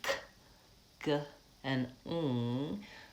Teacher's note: so the velar sounds, K and G, k, g, and ng. The placement, my tongue is in the back.